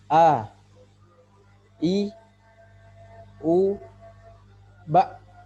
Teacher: Fathah dibuka A, kemudian kasrah agak ditinggikan I, dhammah agak dimunyungkan bu, u, dan sukun mulut pada kondisi normal.